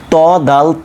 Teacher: এই তিনটা উচ্চারণ জিহ্বার আগা দাঁতের গোড়ার সঙ্গে লাগিয়ে হচ্ছে